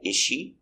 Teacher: we don't hear the S